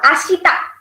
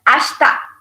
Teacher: This E becomes silent. So it pronounces as Ashta, not Ashita.